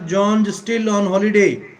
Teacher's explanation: Said with a rising pitch means it's a question which needs answering. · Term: rising intonation